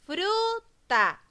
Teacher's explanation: por lo tanto es una palabra grave ya que la fuerza de voz está en la penúltima